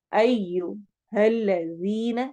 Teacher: یا ایوہ الذین، یا مد کو لمبا کرنا ہے، ایوہ الذین، ذی ذال کو نرمی سے پڑھیں گے اور یا مدہ کریں گے